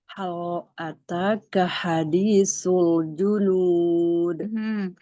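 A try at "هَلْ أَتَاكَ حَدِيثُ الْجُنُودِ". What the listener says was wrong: Jadi antum bacanya gini. Hal ataka hadithul junud. Kerasa tebal nggak? Lam, iya. Lamnya ditipiskan yuk. Jangan sampai naik lidahnya. Supaya lidah jangan sampai naik di lamnya.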